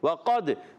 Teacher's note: قاف کو دال سے ملانا ہے، قاف کو پر رکھنا ہے، اور دال ساکن حرف قلقلہ میں سے قلقلہ ادا ہوگا.